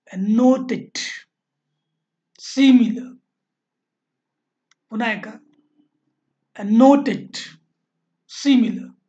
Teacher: One stressed syllable followed by टू unstressed syllable. सुरुवातीला एक stressed असतो, त्याच्यानंतर दोन अनस्ट्रेस्ड येतात. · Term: डॅक्टेलिक